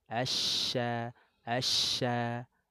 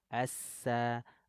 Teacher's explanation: huruf shin menyebar angin di dalam mulut, keluarnya dari tengah lidah.